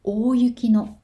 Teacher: の is said high when the last sound of the previous word is high. If the last sound of the previous word is said low, then no is said low.